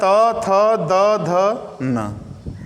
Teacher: कहने का मतलब, जब आप त बोलेंगे, थ बोलेंगे, द, ध, न बोलेंगे, तो इनको बोलते समय आपकी जो जीभ होगी आपके दांत से संपर्क करेगी। जब आपके दांत से संपर्क करेगी, जो ये अक्षर बोलेंगे, तो दांत और जीभ जाकर दांत का संपर्क करेगी, छुएगी दांत को, तो इसलिए इनको दंत वर्ण कहते हैं।